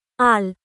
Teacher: জিহ্বার অগ্রভাগের পাশ ও সামনের উপরের দাঁতের গোড়ার দিকের তালুর সাথে মিলে উচ্চারিত হয় একটি হরফ। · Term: লাম